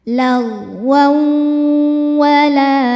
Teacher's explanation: Berikutnya ada hukum idgham bi gunnah karena ada tanwin fathah menghadapi huruf waw. Cara bacanya tanwin dimasukkan ke waw sambil nahan dengung.